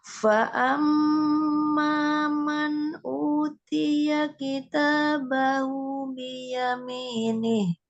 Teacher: ada gunnah di situ mim tasydidnya fa'ammat